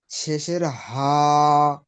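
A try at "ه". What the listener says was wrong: শেষের হা। এটা কণ্ঠনালী থেকে না, এটা হবে হচ্ছে শেষের হা। রিল্যাক্সে, একদম রিল্যাক্সে। শেষের হা।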